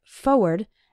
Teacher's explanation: when speaking fast we sometimes say it like forward as if there wasn't that first R but you need to write it with both RS the words